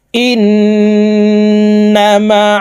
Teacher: থেকে গুন্নাহ করিয়া পড়িতে হয় এই গুন্নাহকে ওয়াজিব গুন্নাহ বলে এখানে হরকতের বামে নুনের উপরে তাসদিদ আছে তাই এই হামজা তাসদিদওয়ালা নুনের সাথে নাকের বাঁশি থেকে গুন্নাহ করে উচ্চারণ করব